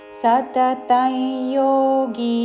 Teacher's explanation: ఇక్కడ అనుస్వారము పక్కన యాతో పదము మొదలవుతున్నది కాబట్టి నాసిక య ఉచ్చారణ